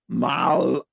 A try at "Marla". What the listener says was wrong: R. How do you say red? I mean, see, you can say the R, right? You just don't. It sounds like you're choking.